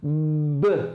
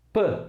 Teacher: se eu sonorizar esse movimento p o que significa isso é você pô voz antes mesmo de começar a produzir o som